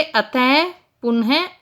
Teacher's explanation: फिर है विसर्ग, इसका उच्चारण ह की तरह होता है, अह का चिन्ह होता है, जैसे अतः, पुनः आदि।